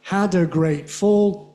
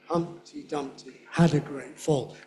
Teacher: 3 beats, 3 potential beats, 3 stresses in a grammatical unit. Usually we downgrade the middle one. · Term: downgrading